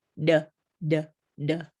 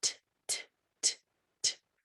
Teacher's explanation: It's a voiced sound. It's voiced, d, d. It makes your throat vibrate.